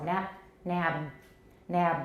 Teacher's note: we have an unreleased voiced final stop, we have a little rumble down here of voicing. 有 点 轰 隆 轰 隆 的， 可 是 它 并 不 长。